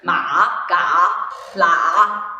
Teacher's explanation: the direction of your intonation should be going down, then you have to stop a little, and then you gotta go up. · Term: third tone